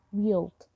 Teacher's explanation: There is a y between we and out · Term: linking